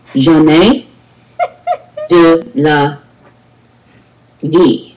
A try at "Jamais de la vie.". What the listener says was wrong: Yeah. Un cheval, jamais de la vie. Excellent.